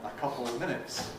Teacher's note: Americans then got confused about whether it's schwa or el schwa, and Americans tend to leave out of entirely and say a couple of minutes.